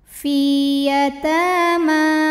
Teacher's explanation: kasrah maka cara bacanya dipanjangkan Finya dua harakat F taii muqadar karena ada baris fathah panjang di atas huruf ta cara bacanya panjang dua harakat